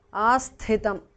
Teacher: Asthitam, thi is mahapranah